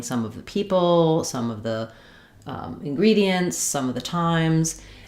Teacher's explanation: Within this phrase, the word some is the one that's going to be stressed.